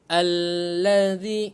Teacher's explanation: Allazi, ingat hamzah wasal bertemu lam, baca baris atas. Allazi, keluarkan sedikit lidah antara gigi atas dan gigi bawah sebab huruf zal. Allazi, panjang 2 harakat.